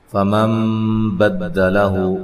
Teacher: یہ نون ساکن کا اقلاب ہے، اقلاب مع الغنہ ہے۔ غنے کی مقدار ایک الف کے برابر ہوتی ہے۔